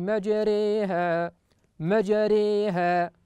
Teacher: يقلقل الجيم لأن من حروف القلقلة، ويرقق الراء، ويميل الألف التي بعد الراء